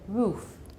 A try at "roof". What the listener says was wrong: Look at my mouth. Roof. Okay, not. You're making it sort of a Chinese R, and it's not r, it's r, roof.